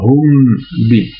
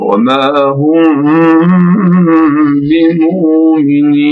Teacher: À cheval entre le mime et le bas, en fait. Bon, c'est un ikhfa, en fait, du mime jama devant le bas.